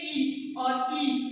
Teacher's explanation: छोटी ई से ज्यादा समय बड़ी को बोलने में लग रहा है तो बड़ी ई हमारा दीर्घ स्वर हो जाएगा और छोटी ई हमारा ह्रस्व स्वर हो जाएगा।